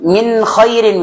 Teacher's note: Maka ketika nun sukun bertemu dengan huruf-huruf ini, maka dua-duanya aktif. Makhraj dari lisannya aktif dan makhraj dari khaisumnya juga makanya dibaca jelas. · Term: idhar